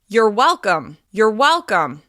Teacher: we reduce the word your and stress the first syllable of welcome well because it's reduced the vowel in turns into the schwa · you're welcome be sure to use friendly sincere intonation you're welcome you're rising to your highest pitch on well holding that syllable a little bit longer and then dropping down on you're welcome